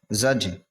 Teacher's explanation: یہاں پر قلقلہ ہوگا یعنی لوٹتی ہوئی آواز نکلے گی